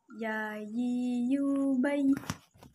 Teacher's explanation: Huruf ya keluar dari tengah lisan, disentuhkan dengan langit-langit.